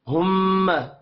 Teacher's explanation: میم مشدد ہے، یہاں پر غنہ کریں گے